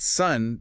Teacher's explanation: Soon pushes the lips all the way forward for that long ooh like moon, >> right? >> But sun drops the jaw for a short relaxed uh